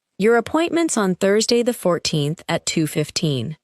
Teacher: The words appointment is become appointments and on Thursday connect smoothly. However, the numbers remain important and usually receive clear stress.